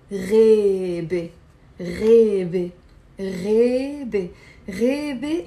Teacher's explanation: So in Levantine Arabic, we pronounce the A as a E